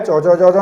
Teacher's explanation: कहां से निकलता है, तालु से, तो इसको बोलेंगे तालव्य